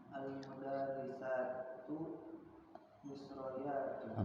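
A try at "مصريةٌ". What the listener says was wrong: Bukan Misra, Misri. Misriyatun. Selalu biasanya gitu ya, kalau untuk negara pasti sebelum yatun kasroh. Indonesiyatun, Maliziyatun, Yabani niyatun, Suudi diyatun. Kasroh biasanya.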